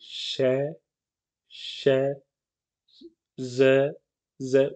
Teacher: आपकी जीभ का थोड़ पीछे का हिसा है वो एकदम ऊपर जाके लगेगा